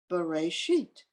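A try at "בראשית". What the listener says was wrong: Vereshit. It's not a B, it's a V. Good. Yeah, V. Right, Vereshit.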